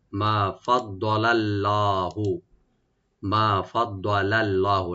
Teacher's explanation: লাম এখানে লাইট থাকবে, আল্লাহ জালালা এখানে মোটা হবে বা ডিপ করে পড়বো আমরা